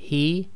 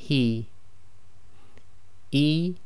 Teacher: this is a soft ha coming from the bottom of the throat